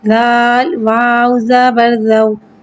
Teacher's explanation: زال نرمی والا حرف ہے، لہذا اس میں سیٹی نہیں آئے گی۔ واو کو ایک الف یعنی 3 حرکات کے برابر کھینچ کے پڑھیں گے۔